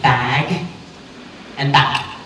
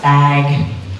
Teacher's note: The quality of the vowel there is the same, but since you're using your voice for the vowel, a, if you also use your voice for the next sound, the speaker perceives a longer duration of voicing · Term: Vowel length